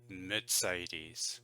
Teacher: I think in German it's got more of a T sound. It's more like Mercedes.